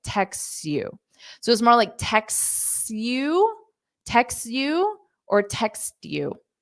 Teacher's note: You can pronounce that T just subtly, text you, or you can just drop it because it's difficult to say, text you.